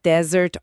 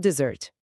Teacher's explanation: Em desert, ou deserto, a força está na primeira sílaba. Em dessert, a sobremesa, o estresse vai lá para a última.